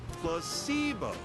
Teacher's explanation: Repeat after me. Placebo. The stress is on the middle syllable.